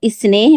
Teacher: स्नेह में ऐ नहीं है बल्कि ए है